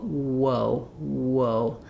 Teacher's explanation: We're going from the ooh position to the uh position.